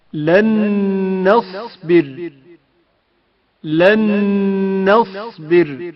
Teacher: وقف کے وقت را ساکن ہو جائے گا اور ترقیق کے ساتھ پڑھا جائے گا۔ لن نصبر لن نصبر سحرا وقف کے وقت ترقیق کے ساتھ پڑھا جائے گا۔